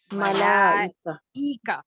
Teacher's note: ملائکہ حمزہ کو تحقیق کے ساتھ ادا کریں گے. تو پھر آپ کیا کرتے ہیں کہ اس حمزہ کو آپ الگ سے پڑھتے ہیں آواز کے ساتھ.